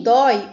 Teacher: Em dói, o I, por representar o som mais fraco da sílaba, é uma semivogal.